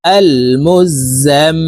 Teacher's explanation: দেখুন এই যে হরকতের বামে মিমের উপরে তাসদিদ আছে এই কারণে এই যা তাশদি মিমের সাথে নাকের বাঁশি থেকে তিন সেকেন্ড পরিমাণ গুন্না করে ধরে রাখবো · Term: ওয়াজিব গুন্নাহ